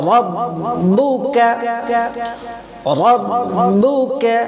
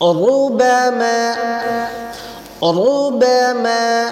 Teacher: র অক্ষরটির উপরে যখন জবর অথবা পেশ হবে তখন র অক্ষরটি পুর বা মোটা করে পড়িতে হবে।